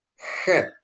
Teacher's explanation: Head dibunyikan dalam tenggorokan seperti Anda melafalkan bak, ya. Head, gitu ya. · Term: guttural letter